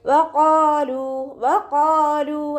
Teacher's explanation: തഫ്ഹീം ചെയ്യുക. ഖാഫിൻ്റെ മഖ്റജ് വരുന്നത് അഖ്സൽ ലിസാനാണ്, നമ്മുടെ നാവിൻ്റെ അവസാന ഭാഗം. നാവ് അവസാനിക്കുന്ന ഭാഗത്തു നിന്നാണ് ഖാഫ് പുറപ്പെടുന്നത്. · ലാമിൻ്റെ കൂടെ വൗമദ് വന്നിട്ടുണ്ട്, 2 കൗണ്ട് നീട്ടിക്കൊടുക്കുക. · പല്ല് ചുണ്ടിൽ തട്ടാത്ത രൂപത്തിൽ വെച്ചിട്ട് ഉച്ചരിക്കുക. ഖാഫ് ഇസ്തിഅലാൻ്റെ ലെറ്ററാണ്, ഉയർത്തി ഉച്ചരിക്കേണ്ട അക്ഷരങ്ങളിൽപ്പെട്ടതാണ്. തഫ്ഹീം ചെയ്യുക. ഖാഫിൻ്റെ മഖ്റജ് വരുന്നത് അഖ്സൽ ലിസാനാണ്, നമ്മുടെ നാവിൻ്റെ അവസാന ഭാഗം.